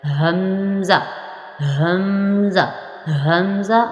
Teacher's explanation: حمزہ اور ہا ان دونوں کا مخرج ایک ہے یعنی حلق کا نیچے والا حصہ